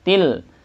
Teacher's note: kasrotain bertemu lam, namanya idgham bila gunnah ya, maka dibaca tanpa dengung. La-nya masuk matobi.